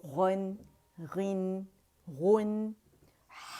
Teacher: جیسے خا ہے اور غین ہے یہ ادن الحلق سے ادا ہوں گے